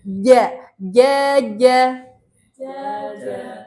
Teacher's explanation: Di tengah lidah bertemu dengan langit